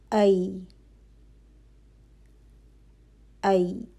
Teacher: ہوا کا چلنا محسوس نہیں ہوتا، اس میں کیا کوالٹی ہے؟ جہر کی کوالٹی ہے۔ اچھا، اب آواز جو ہے وہ فوراً سے رک نہیں رہی، ٹھیک ہے؟ · زبان کا درمیانی حصہ وسط اللسان اوپر اٹھ رہا ہے، اور لیکن اوپر جا کے تالو کو لگے گا نہیں، گیپ رہے گا